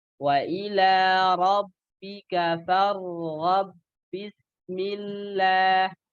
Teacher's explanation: Ada ba bertemu dengan ba sukun, farghab bismillah. Dia masuk dengan ba yang selanjutnya. Jadi tapi nggak dengung ya, idgham tapi nggak dengung.